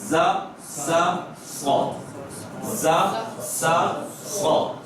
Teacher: زبان کی نوک کہاں؟ نیچے والے دانتوں کے سرے کو